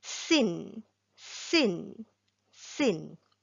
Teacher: Okay, next we have here the letter sin, also from the same place, the front here. The tip of the tongue touches the edge of the front two incisors. But this time round, we don't make the z sound, we make the s sound.